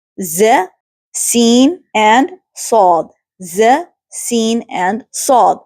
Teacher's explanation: So for the first one, al-safir, there's a whistling sound, and the letters are z, sin, and sad.